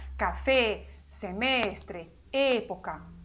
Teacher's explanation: a letra E no espanhol, ela é sempre fechada